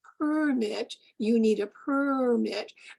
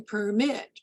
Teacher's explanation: two words are identical in spelling identical and syllable structure but the noun has greater temporal duration on the first syllable